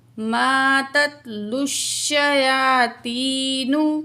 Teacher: وت تبعوا ما تتلو الشیاطین، الف مد ہے، دو الف کے برابر کھینچ کے پڑھیں گے۔ لام کی پیش کو شین تشدید کے ساتھ ملا کے پڑھیں گے